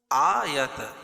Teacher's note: آیت کھڑا زبر قائم مقام الف مدہ کے اس کو ایک الف کے برابر کھینچ کے پڑھیں گے